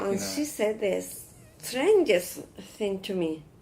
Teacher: Give a sentence stress on strangest.